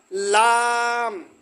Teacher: জিহ্বার আগার কিনারা সামনের উপরের দাঁতের মাড়ির সঙ্গে লাগাইয়া উচ্চারিত হয় লাম